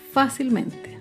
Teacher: Fácilmente se acentúa en la sílaba anterior a la antepenúltima sílaba. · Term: palabras sobreesdrújulas